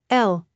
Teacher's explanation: pronounced as L similar to the English L in love but with the tongue touching the roof of the mouth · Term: Dutch letter L